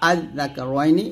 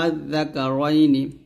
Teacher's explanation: অর্থাৎ এখানে টান দেওয়া যাবে না, দুইটা হামজা উচ্চারণ করতে হবে, আজ দাকা রয়নি, এটা হচ্ছে তাসহিল।